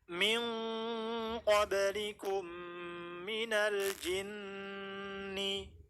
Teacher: nempel makhrajnya qaf di paling belakang dengan langit-langit.